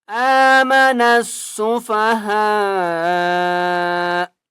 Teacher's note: ہا کے اوپر بڑی مد ہے، 5 الف کی مقدار کھینچ کر پڑھیں گے